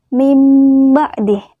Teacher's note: nun mati yang bertemu dengan huruf ba tetapi kita menggantikannya dengan suara mim mim badi tidak dibaca Min ba'di tahu langit contohnya adalah mimba'di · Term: iqlab